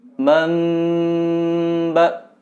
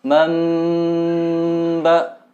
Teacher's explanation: ini termasuk iklab, nun sukun bertemu ba. Jadi cara membacanya itu didengungkan juga sama. Mamba, dan ditahan sekitar 2 sampai 3 harokat.